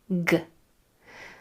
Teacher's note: The back of the tongue is kicking off against the back of the throat. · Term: hard sound for G